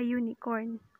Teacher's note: heard in the second example the article a is used because the u in the unicorn has the sound of the consonant y as in yell remember that this rule is based of the first sound heard